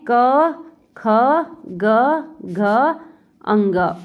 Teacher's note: क वर्ग का उच्चारण स्थान हमारा है कंठ